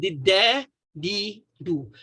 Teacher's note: bila kita sebut dia istifal, dia automatik ujung lidah tu akan naik sikit.